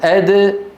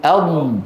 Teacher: الدال من طرف اللسان أد، والضاد من الحافتين أض